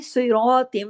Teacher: صراطم، سواد اس لیے ہیوی ہوگا کہ ہیوی فیملی سے ہے